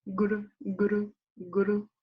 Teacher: It's a reflexive R, so your tongue hits the middle to back of your upper palate.